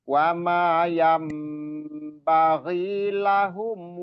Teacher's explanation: Iklab. Jadi huruf nunnya berubah jadi mim dan ditahan dan juga didengungkan atau diunahkan. Wama yam jadi mim.